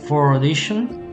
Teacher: she does pronounce the letter R here. So this is a linking R.